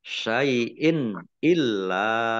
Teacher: kasroh tanwin bertemu dengan huruf alif, bacaan izhar, dibaca jelas. Lamnya dibaca double, ada tasdidnya.